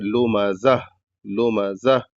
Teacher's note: یہاں پر جب لمزہ میں اخیر میں گولتا ہے یعنی چھوٹی ہا جس کو کہتے ہیں، تو جب یہاں رکیں گے تو چھوٹی ہا کی آواز ظاہر ہونی چاہیے، کیسے؟ لمزہ لمزہ، اس طریقے سے، یعنی ہوا کی طرح جو آواز نکلتی ہا کی وہ نکلنی چاہیے۔